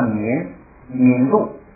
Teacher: 也发个鼻冠音n，这样是前头是米加个n变成了敏度